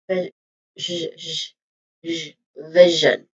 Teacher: this is again a voiced equivalent of the of sh sound